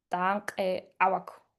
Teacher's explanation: in the plural also the double vowel at the end of the adjective is shortened